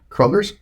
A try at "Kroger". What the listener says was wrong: I call it freaking Kroger because there's no S. Kroger.